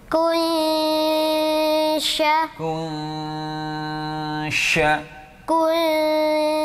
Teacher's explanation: Nah, Itu kunsya, nun sukunnya disamarkan kepada huruf shin. Nah, maka ketika kun, kita sudah bersiap untuk masuk pada makhraj huruf shin atau sya · Kalau yang di sini bertemu shin, nah, maka membacanya juga harus dengung yang lama dengan sa samar, dengung dengan samar. Nah, Itu kunsya, nun sukunnya disamarkan kepada huruf shin. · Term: ikhfa hakiki